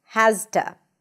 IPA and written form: hæz.tə (has to)